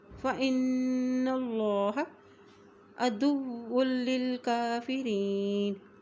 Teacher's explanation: موٹا ادا کیا جائے گا۔ فإن اللہ، فإن اللہ عدو للکافرین، دال کی پیش کو واو کے ساتھ ملا رہے ہیں